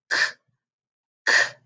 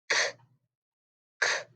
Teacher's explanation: Our back scraper is made all the way back at the back of your mouth, in your throat. It's got to be made like a k, k. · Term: back scraper sound